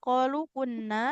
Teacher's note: nunnya panjang ibu dua harakat